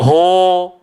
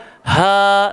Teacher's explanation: Jangan kita baca ho, jangan baca o, salah. Dia kena baca ha, sebut lembut je, sambung bawah dia.